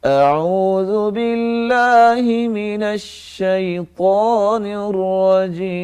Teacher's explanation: الشیطان اور طاء، یہ نون کا غنہ جو ہے وہ الف میں نہیں آنا چاہیے، نہ ہی طاء میں آنا چاہیے